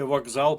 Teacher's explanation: У слові вокзал пишемо К, а вимовляємо ґ.